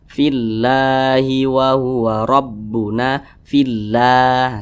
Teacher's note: ke bawah atau berharakat kasrah Nah maka kalimat Allah itu dibaca tarkik jadi dibaca tipis · maka kalimat Allah itu dibaca tarkik, jadi dibaca tipis. Fillah, jangan dibaca fillah, jangan, tapi dibaca fillahi wa huwa rabbuna fillah, seperti itu.